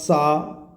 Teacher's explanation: और इसमें वर्ण का सा घोष आपका बनेगा सा, चूँकि सा बोलेंगे आप सा, तो इसमें हमारी स्वर तंत्रिका पास पास नहीं आएंगी, तो आघोष है ये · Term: अघोष